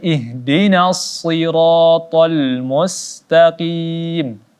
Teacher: Huruf sad yakni huruf sin yang ditebalkan walaupun dia berbaris kasrah